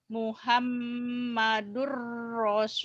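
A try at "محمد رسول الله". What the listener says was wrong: Muhammadur Rasulullah. Jangan lullah ya, lullah. Ada W-nya. Muhammadur Rasulullah. Seakan-akan ada W-nya, ada waw-nya ya. M-nya ditahan guna nih. Muhammadur Rasulullah. Iya, lullah.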